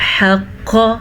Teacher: حا کو واضح کریں، قوف کو موٹا پڑھیں کیونکہ یہ موٹا قوف ہے۔